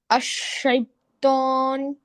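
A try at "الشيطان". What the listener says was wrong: টেনে পড়ো আরো।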